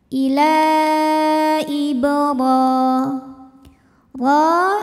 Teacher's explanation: dibaca secara tafkhim ya karena rnya barisnya di atas fathah maka cara bacanya ditebalkan pangkal lidah kita naikkan · karena huruf ro berbaris fathah berdiri cara bacanya dipanjangkan rnya dua harakat Ibi Hi thiiiri karena ada Ya Sukun sebelumnya berbaris kasrah maka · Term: Mad Thobi'i muqadar